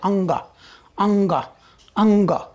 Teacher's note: जब हम अंग बोलते हैं, अंग, अंग, अंग, कंठ की मदद आ रही है, पर उस अंग जब बोलते हैं तो नाक में भी कंपन हो रहा है। आप ध्यान से बोल करके देखिए, अनुभव कीजिए, नाक से भी ध्वनि उत्पन्न हो रही है।